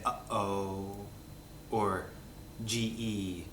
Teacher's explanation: these are glottal stops you're basically stopping your glotus from working you're stopping your vocal cords from vibrating hence glottal stop · the glottal stop is the thing you do when you say uh oh